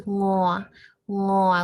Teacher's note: the sound is kind of in the back of your throat, like ngo, like down deep in your throat. We want to make sure it doesn't sound like nyo because that's actually this one here.